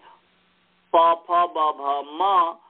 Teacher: प फ ब भ का स्थान ओष्ठ है।